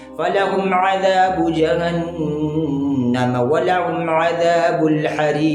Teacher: लफ्ज़ का आखिरी क़ाफ़ है वो वक़्फ़ की वजह से साकिन हो रहा है, तो अब यहाँ पर जो कलकला होगा कलकला कुबरा होगा यानी बड़ा कलकला होगा